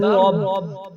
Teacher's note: آگے را حروف مستعلیہ میں سے اس وقت ہوتا ہے جب اس کے اوپر زبر یا پیش ہو، اور اگر اس پر زیر آ جائے یعنی کسرہ آ جائے تو پھر وہ اس کو موٹا نہیں پڑھا جائے۔ تو اب را کے اوپر زبر ہے تو اس کے لیے را کو موٹا پڑھا جائے گا